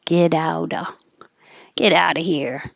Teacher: you don't have to say of you can say uh and the t connects